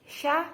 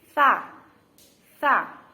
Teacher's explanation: yang huruf tak Hai yang ada titik tiga nya itu Hai ujung lidah dan ujung dua gigi seri pertama atas